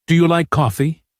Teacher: Rise. Rising. Intonation. Your voice goes up at the end. · Your tone rises slightly on coffee.